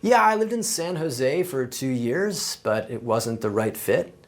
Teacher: uptalk, and that's when a speaker ends a statement with a rising tone.